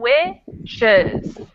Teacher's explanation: We emphasize the first one, wishes, and then the second one kind of becomes a schwa.